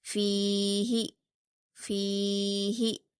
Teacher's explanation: ہا کو جلدی پڑھنا ہے اور فا کو کھینچنا ہے. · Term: یا مدہ